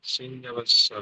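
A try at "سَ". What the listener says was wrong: সিন নয়, ওটা হলো সা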